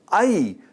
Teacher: this is a diphthong vowel produced by combining two vowel sounds into one smooth glide. It begins with an open front vowel and moves towards a higher vowel position.